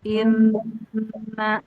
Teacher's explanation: Tetap aja ada man, amana. Nah, bedanya apa? Kalau yang bertasydid ditahan 2 harokat. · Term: nun tasydid